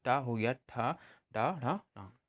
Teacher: तो जो वर्ण उच्चारण में क्या होते हैं, जीभ जो हमारी होती है वो मूर्धा को स्पर्श करती है। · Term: मूर्धन्य व्यंजन